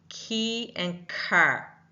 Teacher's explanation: I'm not having the vibrational pull in my throat here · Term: Unvoiced